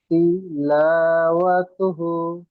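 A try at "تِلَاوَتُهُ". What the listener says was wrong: হ্যাঁ, অতুহু বলে টান দেবেন। ও টান হবে না, এই লামটি টান হবে, আর শেষে হাটি টান হবে। আর বিছখানে পড়াগুলো এই জাবার জের পেশ জলদি পড়তে হবে।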